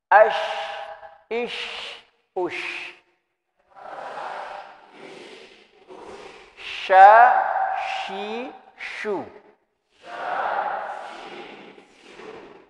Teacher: Huruf shin juga adalah huruf yang keluar dari tengah lidah kita, tengah lisan kita. Lagi-lagi disebutkan di situ ma'a wasatil hanakil a'la, bersamaan juga dengan bagian langit-langit bagian atas.